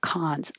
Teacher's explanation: when you say cons, you open enough for the ah sound.